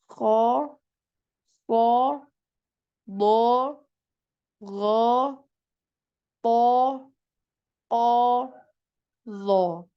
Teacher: alistila itu adalah ee terangkatnya suara terangkatnya suara ke langit-langit jadi ketika mengucapkan huruf istila ini suaranya naik ke atas Kenapa karena disebabkan oleh pangkal lidah yang naik